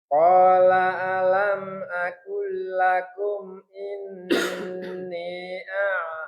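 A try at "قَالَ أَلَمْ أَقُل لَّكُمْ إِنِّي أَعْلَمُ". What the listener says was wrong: Ininya panjang, Pak. Mad jaiznya.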